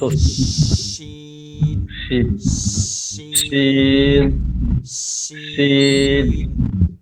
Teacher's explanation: জিহ্বার মধ্যখানটা তালুতে গিয়ে লাগে, জিভের মতন মধ্যখানটা একটু ফাঁকা থেকে যায়, যখন লাগে তখন একটা বাতাস বসে, স স শব্দ আসে, তালে সিন বসার মতন উচ্চারণ হয়, শশী শীন শিন শীন শিন শিন শীন।